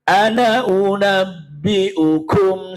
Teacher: Ana itu damir mutakalim wahdah. Bila diwasolkan nunnya dibaca pendek